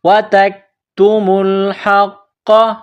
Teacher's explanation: تا کو کاف کے ساتھ ملانا ہے، تا اور کاف کو باریک کرنا ہے